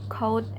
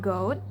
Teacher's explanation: K is a voiceless velar plosive and g is a voiced velar plosive.